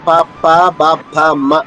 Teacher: పవర్గం యొక్క అక్షరాలకి పెదవులు కలవాలి